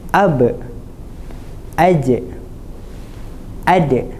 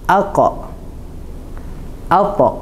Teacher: Tiga huruf di atas perlu dilantunkan dengan suara yang nipis. Aqa. Aq. Dua huruf ni perlu dilantunkan dengan suara yang tebal. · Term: huruf qalqalah